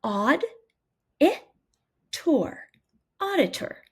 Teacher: Notice that that second syllable is unstressed and represents the schwa sound.